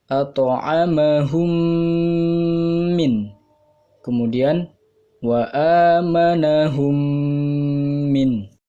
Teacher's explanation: idgham mimi artinya apabila bertemu mim sukun dengan mim yang berharokat, panjangnya dibaca 1 sampai 1,5 alif